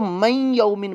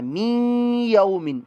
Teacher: इस कलमे के अंदर ये बात याद रखिएगा کہ بعض لوگ اس کو پڑھتے ہوئے میم کی آواز جو ہے میم زیر می کی نکل رہی ہے، لیکن جب آپ ہجے صحیح کر لیں گے بعد میں جب رواں اس کو پڑھیں گے تو من یومن پڑھ دیں گے، می سے شروع کرنا ہے، میم زیر می، تو می سے کرتے ہوئے آگے ہم نے غنہ کرنا ہے